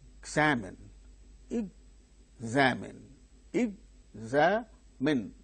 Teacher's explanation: There are three syllables in the word. The second syllable gains stress.